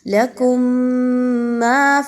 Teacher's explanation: میم ساکن کے بعد میم کا حرف آ گیا تو آپ نے یہاں پہ اچھے سے غنہ کرتے ہوئے پڑھنا ہے